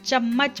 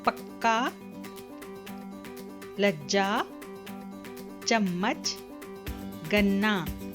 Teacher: चम्मच में 2 म की ध्वनि सुनाई देती है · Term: द्वित्व व्यंजन